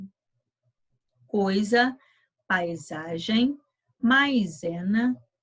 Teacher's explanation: a coisa paisagem maizena não se esqueça que é sim que a letra s situada entre vogais representa o som de z